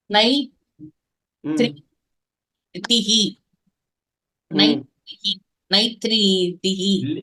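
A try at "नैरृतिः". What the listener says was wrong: இல்லையே, இல்லையே, தப்பாச்சே. கரெக்டா சொல்லணுமே. நை, நை கரெக்டா வாசிட்டீங்க. அது திரா இல்லையே.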